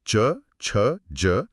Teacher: इसके बाद हवा थोड़ा आगे आती है और जीभ मुंह की छत के पिछले हिस्से से टकराती है। जिसे तालु कहते हैं। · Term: तालव्य